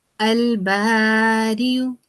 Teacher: اس میں ہم نے یا کو نظر انداز کیا اور ہم نے حمزہ کو ادا کیا